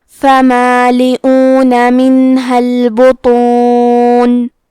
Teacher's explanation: کلمت البطون میں حرف الطو ہے. طو حروف التفخیم میں سے ہے تو ہم یہ حرف کو موٹی آواز میں پڑھیں گے